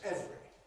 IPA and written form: ˈevri (every)